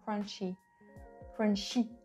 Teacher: Then when he says words like crunchy, crunchy, I, it's a real French I. It's way sharper, way shorter than English I